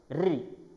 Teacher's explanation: इस स्वर के उच्चारण करते समय हमारी जीवा, यानी कि जीभ जो है थोड़ी सी कंपित हो जाती है। री, है ना? हवा के निकलने में हमारी जीभ जो है थोड़ी बाधा निर्माण करती है, जिससे वहाँ कंपन निर्माण होते हैं, इसलिए इसे संयुक्त स्वर कहा है।